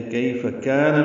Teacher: کاف باریک، الف مدہ، 2 حرکات لمبا کریں گے